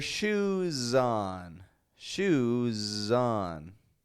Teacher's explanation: on you can get that s sounding like a z because Shu ends in the sound ooh which is voiced and so you need your s to be voiced